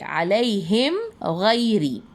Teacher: میم ساکن کے بعد حرف غین آیا، تو ہم اس میم کی آواز کو ظاہر کر کے پڑھیں گے علیہم غیری۔